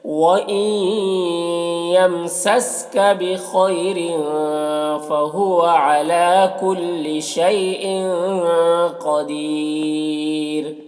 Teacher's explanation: دیر میں یہاں پر وقف کریں گے تو مد عارض وقفی ہوگا اور را کو باریک پڑھیں گے اس طرح سے. وَإِن يَمْسَسْكَ بِخَيْرٍ فَهُوَ عَلَى كُلِّ شَيْءٍ قَدِيرٌ.